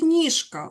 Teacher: Глухий к не може перемогти дзвінки ж